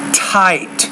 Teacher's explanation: in English you got to get that tongue right behind the teeth